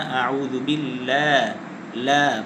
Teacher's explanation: লামটাকে মোটা করে পড়া যাবে না। পাতলা করে পড়তে হবে।